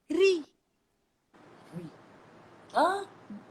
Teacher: Dan satu sahaja caranya untuk kita nipiskan ra, iaitu hujung lidah naikkan ke gigi atas. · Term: ra yang berbaris bawah